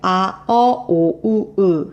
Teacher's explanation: 혀의 가장 높은 부분이 뒤쪽으로 가요. 혀가 뒤쪽으로 간다는 얘기예요. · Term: 후설 모음